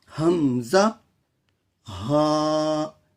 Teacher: شروع حلق سے حمزہ اور ہا ادا ہوتے ہیں